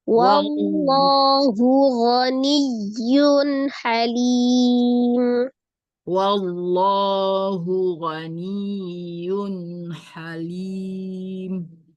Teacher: Wallah ditebalkan lafuz jalalahnya. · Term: dibaca tebal